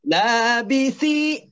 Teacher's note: Sa-nya itu adalah sa yang di ujung lidah. Ya, lidahnya ditaruh di antara dua ujung gigi